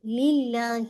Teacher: للہ جو ورڈ اللہ کے لام کو لام جلالہ کہتے ہیں، اس کو ہیوی نہیں کرنا. ٹھیک ہے، آپ کو لائٹ رکھتے ہیں، آپ ایسے نہیں پڑھ سکتے للہ نہیں، للہ لائٹ رکھیے گا.